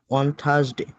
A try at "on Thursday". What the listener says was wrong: On Thursday, not Thurs. Okay, Thursday.